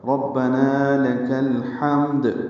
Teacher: میم سے ملانا ہے، میم ساکن ہے اس پہ اظہار شفوی، اور دال ساکن ہے وقفاً اس پہ قلقلہ ہوگا